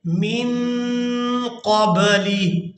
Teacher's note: نون کو ادا کرتے ہوئے آواز کو ناک میں لے جائیں گے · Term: اخفا